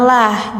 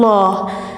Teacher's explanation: Karena didahului harokat bawah kasroh, jadi bunyinya harus tipis.